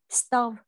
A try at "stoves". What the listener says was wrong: Got S đằng sau. Stoves.